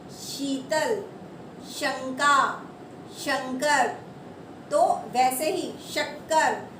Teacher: आप जैसे बोलेंगे आपकी जो जीभ का बीच वाला पोर्शन है वो आपके तालू को टच करेगा, मतलब कि ये तालव्य श है।